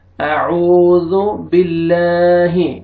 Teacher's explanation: ابھی اس میں آپ دیکھیں کہ لام سے پہلے زیر ہے، لام کو باریک کر کے پڑھیں گے.